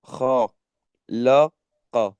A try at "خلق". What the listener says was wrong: You have to join them together, okay?